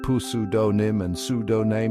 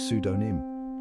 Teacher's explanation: It's got a silent P lurking in the shadows, just waiting to trip people up. That P is sneaky, always there but never heard.